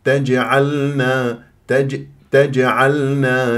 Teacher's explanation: الجيم مقلقله فيها قلقله صغرى في وسط الكلام